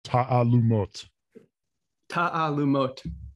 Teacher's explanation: the emphasis is on the last syllable. And the key thing that I think people have trouble with is that those two A's next to each other, there's like an apostrophe in between.